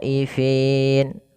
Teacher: Nah, ini sama seperti ulaika, yaitu bacaan mad wajib muttasil, maka khonya wajib dipanjangkan 4 harokat atau 5 harokat